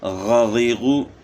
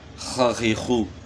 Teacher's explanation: ہمیشہ موٹے پڑے جاتے ہیں، پر پڑے جاتے ہیں، تو زبان تالو کی طرف اٹھ جاتی ہے موٹا کرنے کے لیے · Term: موٹے حروف